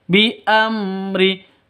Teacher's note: Mim mati bertemu dengan ro. Jelas terang, mim sukunnya jelas. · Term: izhar safawi